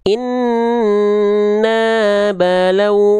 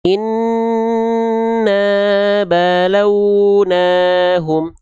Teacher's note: Maka huruf nunnya cukup dibaca dengan vokal A. Kadarnya dua kali hitungan, dua kali ketukan atau dua harakat dua kali ayun. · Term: mad thobi'i